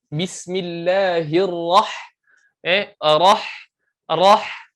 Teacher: huruf ha di sini dia ada hams. Dia ada apa? Dia ada hams, ada angin.